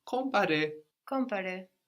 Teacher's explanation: So the M kind of gets swallowed into the nose with the vowel, you know, we think about it, but we don't get all the way there.